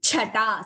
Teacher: Drishti chata. Second cha is Mahaprana.